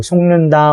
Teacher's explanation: 앞에 있는 기역이 뒤에 있는 니은의 영향을 받아서 기역이 이응으로 바뀐 거고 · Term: 비음화